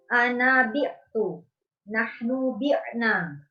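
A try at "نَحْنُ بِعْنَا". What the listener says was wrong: Bi'na, panjang. Nahnu bi'na. Ulang.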